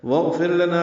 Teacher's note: واغفر لنا میں واو کو غین سے ملانا ہے ، اصل میں اغفر لنا ہے، ملا دیں گے، واغفر الف